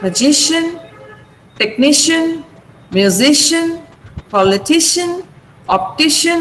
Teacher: So in words with the suffixes IAN and IOUS, the syllable preceding the suffix is stressed. Preceding means which comes before.